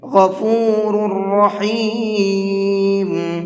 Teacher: دونوں را کو منہ بھر کے پڑھیں گے، اس لیے کہ پہلی را کے اوپر پیش ہے اور دوسری را کے اوپر زبر ہے۔ را کے اوپر زبر یا پیش ہوتا ہے تو وہ را منہ بھر کے پڑھی جاتی ہے۔